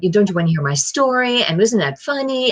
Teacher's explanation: And everything goes up at the end of every sentence, almost like you are insecurely looking for the listener's approval. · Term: uptalk